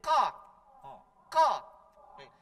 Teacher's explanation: huruf ka itu agak dekat di hujung lidah paling belakang, mendekati lidah kecil itu namanya. Paling belakang lidah paling belakangnya ka. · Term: huruf qaf